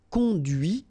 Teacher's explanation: final T is not pronounced